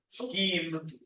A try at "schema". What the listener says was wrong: Well, look, there's an A there. It's not a scheme. Scheme would be spelled with an E. There's an A here. It's pronounced schema or schema or schema. Scheme is with an E at the end.